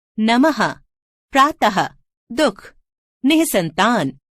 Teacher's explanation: इसका चिन्ह ये है। इसका उच्चारण आधे ह की तरह होता है। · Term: विसर्ग